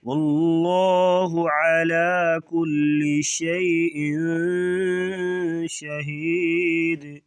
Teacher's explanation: یہاں پہ اخفاء مع الغنہ ہوگا یعنی ناک میں آواز چھپا کر غنہ کریں گے